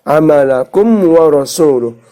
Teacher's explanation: Syafawi itu bibir. Maka ketika kita berbunyikan kum di bibir, bibir atas dan bibir bawah menempel menjadi satu, maka harus jelas tanpa didengungkan. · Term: idhar syafawi